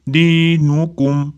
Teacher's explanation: Dinukumni daldan keyin maktabiy bir ikki deguncha cho'zamiz.